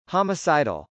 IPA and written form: hˌɑməsˈɑɪdəl (homicidal)